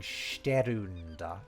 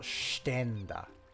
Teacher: R sounds can often just get changed into an N sound.